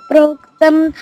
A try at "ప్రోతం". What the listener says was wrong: అది అక్కడ ప్రోక్తం కాదురా, ప్రోతం. ఇంకా మిగతా అన్ని కరెక్టే రా, అదొకటి.